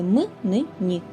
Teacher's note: повітря виходить одночасно через рот і через ніс таких приголосних звуків у нашій мові три це звуки м ни